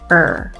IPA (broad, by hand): ɜ